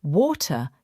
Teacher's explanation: In British English, water keeps a clear T. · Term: T sound